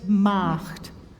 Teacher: would you brighten the a little bit?